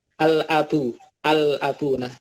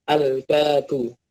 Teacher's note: Alif Lam Qomariah itu hukumnya dibaca jelas atau dibaca Idhar artinya tidak dileburkan lamnya terbaca di sini kan ada alis kemudian ada lam ada Hamzah dan